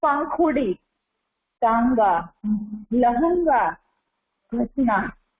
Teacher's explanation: ये सारे शब्द जो है वो अनुनासिक शब्द है जिसको हम उच्चारण करते हैं तो हमारे नाक और मुख दोनों से हवा निकलती है।